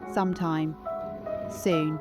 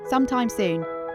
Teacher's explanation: The Ooh vowel in soon should be slightly elongated and lowered in pitch, almost as if you are musing on the concept [music] of time itself. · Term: aristocratic understatement